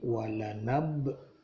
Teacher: dibaca qalqalah, dipantulkan, ba matinya dipantulkan